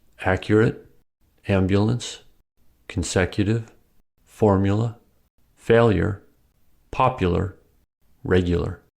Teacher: When U is unstressed, it may sound like ya.